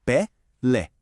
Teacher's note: Mas quando a gente coloca aquele acento agudo, a mágica acontece. A força vai toda lá pro final.